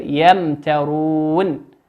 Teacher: ميم ساكنة أتى بعدها حرف التاء، والتاء من حروف الإظهار. وهكذا الأحرف التي وهي حروف الهجاء ما عدا الباء والميم. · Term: إظهارا شفويا